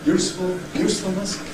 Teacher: In ‘usefulness’, really very very short duration because it’s doubly clipped